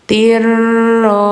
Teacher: ini jangan tin tapi tir idgam dimasukkan ke ro ya. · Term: idgham